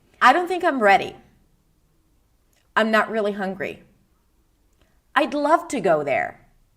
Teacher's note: statements, as I said at the beginning, are sentences that are said with a rising falling intonation.